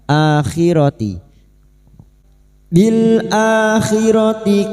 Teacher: hamzah yang berharakat alif kecil di atas mad badal dua harakat kita panjangkan